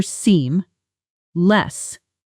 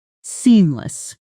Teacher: almost swallowing the second syllable slightly. Try it slowly for seam less then naturally seamless letting that second syllable soften.